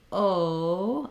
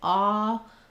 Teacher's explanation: okay so when I'm saying O versus ah you could see when I say oh I'm rounding and closing when I say ah not quite as round and also my jaw is more open